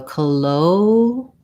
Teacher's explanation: colloquial has second syllable stress. So that means that the letter CO at the beginning, rather than saying co with an O vowel, it has a reduced vowel, sounds like a schwa, sounds more like ka.